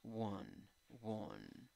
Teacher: Es schwa. No es ni A, ni E, ni O. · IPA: \ ˈwən \